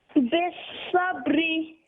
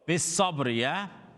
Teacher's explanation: Ba's got a sukun joins to the letter before. Ra is an empty mouth letter because there's a kasra underneath it.